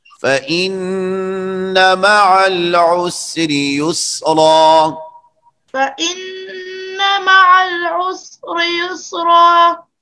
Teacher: سین کو ساکن پڑھے، سین کو حرکت مت دو